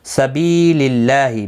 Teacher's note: سبیل اللہ، بی یا مدہ ہے، ایک الف کی مقدار کے برابر کھینچ کر پڑھیں گے. اللہ کا لام زیر کی وجہ سے باریک پڑھا جائے گا، اس کے اوپر کھڑی زبر بھی ہے، ایک الف کی مقدار کے برابر کھینچ کر پڑھیں گے.